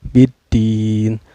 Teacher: cara bacanya dipanjangkan Boleh dua harakat boleh 4 harkat dan juga boleh 6 harkatnya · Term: Mad Arid lissukun